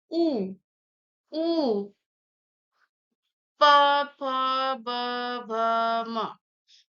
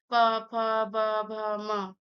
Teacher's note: हर उच्चारण में पूरा दोनों ओठ आपका जरूर स्पर्श हो रहा है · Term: ओष्ठ